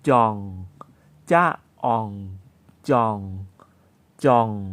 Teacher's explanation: แสดงว่าเป็นเสียงวรรณยุกต์เอกเป็นเสียงต่ำนะครับ